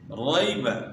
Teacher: یا ساکن سے پہلے زبر ہے تو یہاں نرمی کے ساتھ ہم نے پڑھنا ہے یا لین کو۔ یا ساکن سے پہلے زبر ہو تو یا لین ہوتی ہے، اور یا ساکن سے پہلے اگر زیر ہو تو یا مدہ ہوتی ہے۔